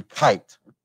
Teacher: one example of an aspirated k in english would be when you say kite and so those are the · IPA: kʰ